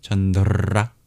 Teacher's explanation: All the R's in Sanskrit are made retroflex, so you hear a little roll